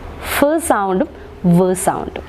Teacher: The teeth, the upper teeth becomes the passive articulator, very good, and the lower lip becomes the active articulator. Those sounds are called as labiodental sounds.